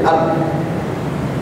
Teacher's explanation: Atau lebih gampang lagi ba lah. Huruf ba, kalau kita ucapkan ab, itu lisan kita nutup ab. Nah, jadi suaranya di dalam, ya, tertelan ke dalam. Jadi boro-boro mengalir, ini mah tertelan ab, seperti tertelan suaranya sehingga tidak ada sisa alirannya. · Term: ghalqil makhraj